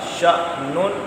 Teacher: اگر حمزہ پر جزم نہ ہوتی تو یہ الف مدہ تھا، پھر شانن تھا، لیکن یہ حمزہ ساکن ہے اس لیے جھٹکا